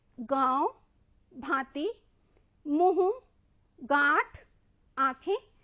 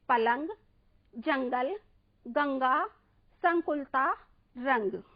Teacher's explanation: ध्वनि नाक और मुंह से एक साथ बाहर आती है, वहां पर चंद बिंदु का प्रयोग किया जाता है, जिसे हम अनुनासिक कहते हैं।